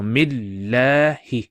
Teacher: a shadda here so we pronounce it as mil and then that la stretching sound is due to the hovering alif